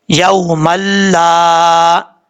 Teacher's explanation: میم کو جب لام سے ملائیں گے تو 2 زبر کی تنوین کے بعد لام آ جائے تو ادغام یرملون ہوتا ہے بغیر غنہ کے. یہاں پہ ادغام تو ہو رہا ہے لیکن غنہ نہیں کریں گے